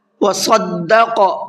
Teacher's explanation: صاد کو بھی پر کر کے پڑھنا ہے اور قاف کو بھی پر کر کے پڑھنا ہے